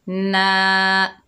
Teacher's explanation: कुल, नून के ऊपर ज़बर है, आगे अलिफ खाली है, ये अलिफ मद्दा है, एक अलिफ की मिकदार खींचकर पढ़ेंगे